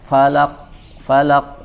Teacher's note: jangan ditahan seperti ada tasydid atau juga Jangan sampai hilang qalqalahnya